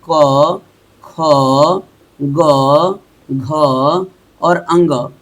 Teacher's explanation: अ आ क वर्ग और ह का उच्चारण स्थान जो होगा वो कंठ होगा